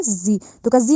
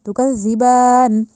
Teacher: تکذبن نہیں کہا جائے گا، تکذبان. دوسرا زال کو نرمی سے ادا کیا جائے گا، زا نہیں بنانا